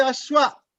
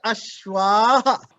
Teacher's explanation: You have to put ashwaha. That is called visarga. The ha sound should come.